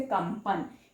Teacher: ये प से पहले जो अनुस्वार आया है इसका उच्चारण म होगा